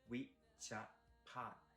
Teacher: So we would be high tone and Cha also high tone and Pad would be falling tone